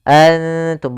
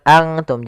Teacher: Maka cara membacanya samarkan kepada huruf ta. Nun makhrajnya di langit-langit, ujung lidah menempelkan dengan langit-langit. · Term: ikhfa aqrab